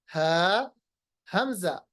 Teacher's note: English में अगर हम जानेंगे तो they are pronounced from the bottom part of the throat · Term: अक़सल हलक